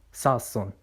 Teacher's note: The phoneme is now pronounced as an alveolar stop when it begins a word and a geminated fricative when it does not, so the word ton changes to son in sason.